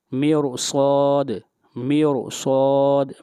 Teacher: حروف مستعلیہ میں سے صاد آ رہا ہے اور اس کے اوپر فتحہ ہے، یعنی حروف مستعلیہ مفتوح ہے، اس لیے اس را کو موٹا پڑھیں گے